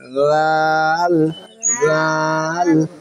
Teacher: জিব্রাকে সামনে উপরে দুই দাঁতের আগার সঙ্গে লাগে নরম ভাবে